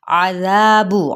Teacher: عذاب، عین کو وسط حلق سے ادا کرنا ہے، ذا پہ مد سلیب الالف کا قاعدہ، با کی پیش کو لمبا نہیں کرنا